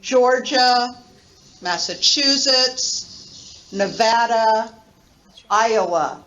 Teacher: georgia first syllable massachusetts third syllable nevada second syllable iowa first syllable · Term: stressed syllable